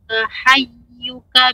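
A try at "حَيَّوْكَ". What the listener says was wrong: perhatikan ibu bukan hayyuka tapi hayyauka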